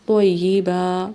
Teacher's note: تو کو موٹا پڑھیں گے اور با کو ایک الف کے برابر لمبا کریں گے۔ یہاں پہ سٹاپ کر رہے ہیں، اس لیے ایک زبر کو پڑھیں گے اور ایک کو نہیں پڑھیں گے۔